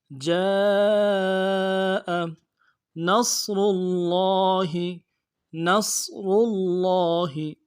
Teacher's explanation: صاد کو موٹا ادا کرنا ہے، موٹا حرف ہے، صاد کی سیٹی موٹی ہوگی